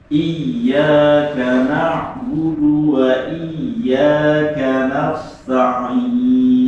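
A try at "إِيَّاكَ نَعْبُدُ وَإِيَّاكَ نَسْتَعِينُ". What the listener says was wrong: Nah, sinnya jangan diangkat lidahnya, nanti jadinya sod. Padahal sod itu susah. Sinnya didatarkan lidahnya. Ganas.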